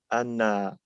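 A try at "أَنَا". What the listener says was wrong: ana. Ana. Ana. So you don't want to say, it sounds like you're saying a shadda, like a shadda on the nun going anna, anna. There's no shadda there.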